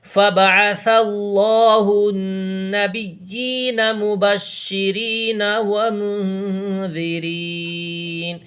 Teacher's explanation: یہ را باریک پڑھا جائے گا کیونکہ را کے نیچے زیر ہے